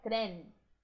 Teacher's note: Lembrando que o N termina lá no céu da boca.